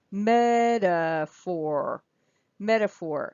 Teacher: you hear that t goes down to the flap D